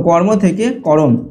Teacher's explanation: মাঝখানে স্বরের আগমন হয়েছে অর্থাৎ এটা মধ্য স্বরাগমের উদাহরণ ঠিক আছে কর্ম থেকে ক র এখানে কিন্তু একটা অ স্বরধ্বনি